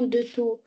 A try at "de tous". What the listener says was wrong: Alors, ici, on prononce le S, hein?